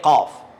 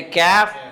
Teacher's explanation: جہاں قاف جہاں سے نکلتا ہے اسی کے سائڈ سے کاف بھی نکلتا ہے